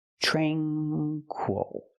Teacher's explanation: We use the long A sound like pay and say. Tranquil. Because you have the k sound together.